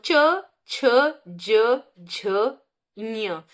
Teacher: तो ये किससे बोले जाते हैं, तालु से